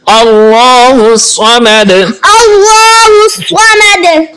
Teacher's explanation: صاد کو پر پڑھیں گے اور دال پہ قلقلہ بھی کریں گے